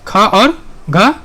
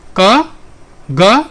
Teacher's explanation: यानी ख और घ क्या कहलाएगा? तो इसको कहते हैं महाप्राण। जी हाँ, और बाकी क, ग, ये सब क्या कहलाएगा? ये कहलाएगा अल्प प्राण